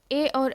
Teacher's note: ए और ए कंठ तालु से बोले जाते हैं।